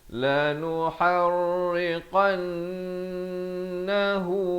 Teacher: qan dua harakat wajibul ghunnah hu juga dua harakat sekali lagi wajibul ghunnah